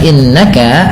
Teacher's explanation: Innaka pada bacaan innaka ada nun yang berharakat tasdid. Ini ditahan dengan bacaannya dua harakat dengan menahan bunyi nnya. Yang kita kenal dengan istilah yaitu ghunah.